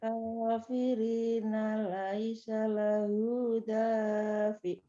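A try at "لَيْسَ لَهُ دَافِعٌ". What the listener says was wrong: Kepanjangan. Sama dengan hu. Lahu dafi'.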